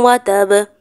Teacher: اب یہاں پر دیکھیں وتب پر با ساکن کرنی ہے اور ساتھ تشدید بھی ہے، تو ہم قلقلہ زیادہ واضح کریں گے